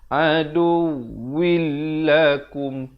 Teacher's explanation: Jadi di sini kita baca asalnya adu win, waw baris tanwin di bawah bunyi win. Tapi bila datang lam, dia terus masuk tanpa dengung. Adu willakum, kum izhar syafawi, sempurnakan saja mim mati, jangan dipanjangkan. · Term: idgham bila gunnah